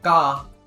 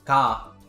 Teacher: comparing that double g sound ka with just a single g sound ka it might be a little bit hard to hear the difference